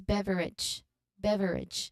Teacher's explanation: the emphasis should be on the first syllable, bev, and the ending a should sound like it.